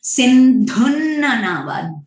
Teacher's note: सिंधुन्न नावा, ध है जो महाप्राण है।